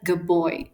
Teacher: it comes out as good boy where the duh becomes B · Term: assimilation